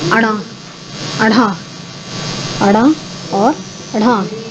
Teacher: इनके उच्चारण में जीभ ऊपर उठती है, मूर्धा को छूती हुई त्वरित गति से नीचे आती है, यानी कि उछाल लेती है। एक तरीके से जीभ जो है उछलती है कि ऊपर जाती है और फिर एकदम झटके से नीचे आती है। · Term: उच्छिष्ट व्यंजन